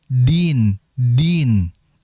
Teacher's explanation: tidak ada desisan yang keluar karena dia bersifat jahr.